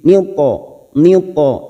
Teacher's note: huruf po ini masuk pada huruf isti'la, huruf tebal, maka cara memantulkannya dengan sedikit memonyongkan bibir. Niu po, hampir seperti membunyikan huruf asli. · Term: kolkola huruf tebal